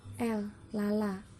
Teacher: Lalu yang terakhir ada fonem L yang cara artikulasinya berada di aproksiman lateral dan tempat artikulasinya berada di alveolar atau belakang gigi